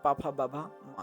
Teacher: होष्टव्य में पाफा, बाभा, मा होता है